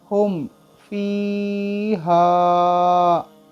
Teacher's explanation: ہا میم پیش ہم، نیکسٹ لیٹر دیکھیں فا ہے، تو اس لیے ہم اس میم ساکن کو بغیر گنہ کے ظاہر کر کے پڑھیں گے۔ فا یا زیر فی، ہا الف زبر ہا، فی ہا، ہم فی ہا، اس طریقے سے پڑھنا ہوگا۔